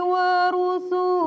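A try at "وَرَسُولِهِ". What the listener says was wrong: Wa rasu, bukan rusu. Wa rasulihi.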